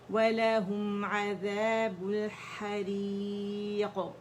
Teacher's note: را کسرہ کے ساتھ باریکی سے پڑھی جائے گی